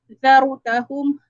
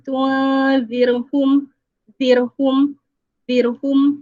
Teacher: lidah memenuhi rongga mulut kita. Zarutahum, dan mulut kita sedikit muncung. Zarutahum berbanding dengan tunzirhum, zirhum, mulut kita ke arah nipis. Sebab ra dalam situasi ini adalah ra yang nipis. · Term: ra tebal